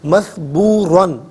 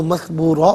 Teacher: فرعون میں را ساکن ما قبل فا کے نیچے زیر، را ساکن کو باریک کر کے پڑھا جائے گا. مثبوراً، یہاں وقف کریں گے تو مثبورا پڑھیں گے، دونوں صورتوں میں را کو پر کر کے پڑھیں گے